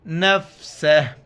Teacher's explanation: جب وقف کریں گے نفسہ، آخر میں صرف ہا کا ساؤنڈ آئے گا. نفسہ.